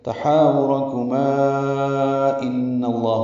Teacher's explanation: تحاورکما میں ہا الف مد ہے، 2 حرکات لمبا ہے، را پر ہے، کما میں ما الف مد ہے، اور اس کے بعد حمزہ آنے کی وجہ سے مد منفصل ہے، تحاورکما ان اللہ ہوگا، جب ملا کر پڑھیں گے تو مد بنائیں گے مد منفصل۔ ان میں نون مشدد پہ غنہ ہے، اور نون کی زبر کی وجہ سے لام اس میں جرالہ پر ہے، اور یہ یہاں پہ 4تھی مرتبہ ہے۔